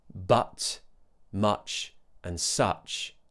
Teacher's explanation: Remember the schwah uh u uh do the same thing. Neutral, relaxed, central area, but just open your mouth a bit more. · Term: uh sound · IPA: /ʌ/